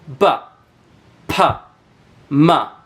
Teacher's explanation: These are sounds that are made by using your two lips, both of your lips, your top and bottom lip. · Notice when I'm saying those sounds, both of my lips are touching and my lips are the main muscle that are being used to create those sounds. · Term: bilabial sounds